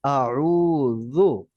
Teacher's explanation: প্রথমটা হামজা, পরেরটা আইন, রুটা লম্বা হবে, যু নরম।